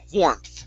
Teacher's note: give me a th instead of an f sound